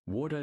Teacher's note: The flap T rule. When a T sound sits comfortably between two vowel sounds, it changes into a very fast soft D sound.